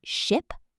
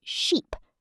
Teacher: The short I in ship, your mouth is relaxed. The long E in sheep, you smile a little